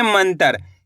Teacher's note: म के ऊपर बिंदी लगी हुई है। तो इस बिंदी का उच्चारण आधा न के रूप में करेंगे।